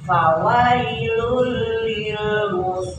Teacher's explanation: bilun jadi bila itu dengan tidak ung bila dengan tidak Gun tidak didengungkan ya jadi hanya ditasidkan saja